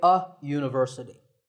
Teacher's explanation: that first sound is a ya sound which is a consonant sound